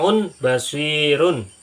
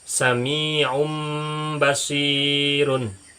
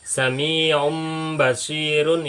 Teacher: jadi bunyinya nun mati menjadi Bunyi mim mati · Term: iqlab